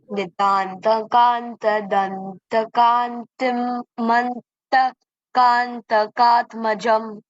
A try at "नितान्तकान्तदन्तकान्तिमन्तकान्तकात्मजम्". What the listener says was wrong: You don't have to split it like kantim and then add. You can just say Nitantakantadantakantimantakantakatmajam. When you say fully, it's fine.